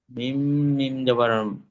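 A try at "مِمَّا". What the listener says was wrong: মিম মিম জবর আছে না, মিম মিম জের।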